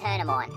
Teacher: R is dropped, so it's turn 'em on.